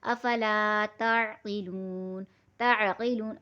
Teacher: الف خالی سے پہلے زبر ہے، تو ہمیں اسے پڑھنا ہے کھینچ کر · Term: الف مدہ